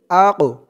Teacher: ওয়াল আক, হামজা দিয়ে কফ ধরবে। আক, এই কফটা হচ্ছে কলকলার হরফ, ধাক্কা দিয়ে পড়তে হবে।